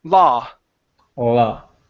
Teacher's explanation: So instead of saying lao, okay, it's only an ah sound.